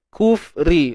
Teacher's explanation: Ra nipis sebab ra berbaris bawah.